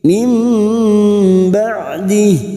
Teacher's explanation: membalikkan nun atau tanwin menjadi mim dengan merapatkan bibir tanpa menekan disertai mendengung selama 2 atau 3 harokat · Mim ba'di, huruf ain ba'di jangan samakan dengan hamzah. Huruf ain memiliki sifat tawasud dan jahar, maka bunyinya ada sedikit aliran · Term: iqlab